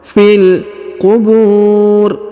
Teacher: huruf Fi langsung kita sambung masuk ke huruf lam yang berharakat sukun ya fil qubur huruf Bu dipanjangkan boleh dua boleh empat boleh